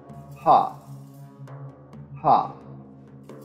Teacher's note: a voiceless glottal aspirate, and it is produced by forcing air through the glottis without engaging the vocal cords